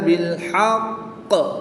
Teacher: قاف کے اوپر تشدید ہے. قاف حروف قلقلہ میں سے ہے تو جب حروف قلقلہ مشدد ہوں تو ان میں قلقلہ خوب ظاہر ہوگا. وقف کی حالت میں قاف کے نیچے جو زیر ہے اس کو ساکن کر دیں گے.